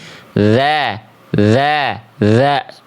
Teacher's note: Huruf dzal makhrajnya dari ujung lidah menyentuh ke ujung gigi sari atas.